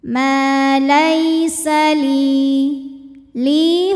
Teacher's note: lunakkan Ma Laisa li li hukum tajwidnya adalah Mad Thobi'i dahohiri sebab ada Ya Sukun didahului harakat kasrah maka huruf lam dipanjangkan dua harakat